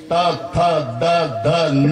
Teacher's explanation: दाताला धक्का मारल्याशिवाय उच्चार होत नाही. जिभेचा धक्का दाताला.